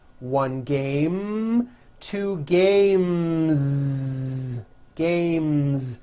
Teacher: you hear in the word game m is the m sound M which is a voiced consonant so because of that when you add an S the S should also be voiced